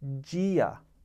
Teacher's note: You'll notice that J sound is a front or slender D sound. And the reason that is because D is immediately followed by I.